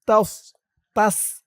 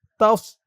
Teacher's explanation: তাস বললে এই সদের জায়গায় সিনের উচ্চারণ হয়ে যাবে